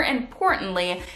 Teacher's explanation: I would describe the word importantly here as beginning with hard attack, and I would generally transcribe it with the symbol for a glottal stop. But in physical reality, this glottal stop is a period of vocal fry.